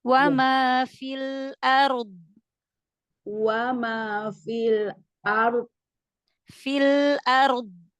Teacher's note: ya pangkal lidah tetap tetap diangkat pangkaldah tetap diangkat gitu ya suaranya naikin ke langit-langit mulut jadi dia lebih gendut suaranya